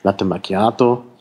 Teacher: Latte mit langem T, Macchiato mit langem K